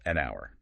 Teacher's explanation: Because the H is silent, it sounds like it starts with O.